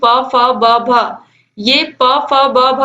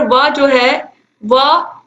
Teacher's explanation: इनका उच्चारण किससे होता है, ओष्ठ से होता है। तो ये ओष्ठ व्यंजन हो गए। तो यहाँ पर व जो है व इसका उच्चारण होता है दंतोष्ठ से, दांतों से और ओंठों से।